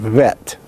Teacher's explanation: But remember that it is not a V, but a B fricative